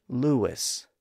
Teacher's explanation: the lips are rounded when we make the oo sound, and that rounding is carried over into the following vowel sound. So the oo sound extends over and becomes the first part of the second syllable. · we often pronounce that name with a slight W sound in between. We often say Lewis.